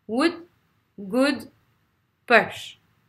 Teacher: c'est ni un U ni un OU. C'est un son entre les deux. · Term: petit U à l'envers